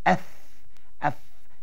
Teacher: Dengan perut bibir di sebelah bawah diangkat ke hujung gigi di hadapan. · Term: huruf fa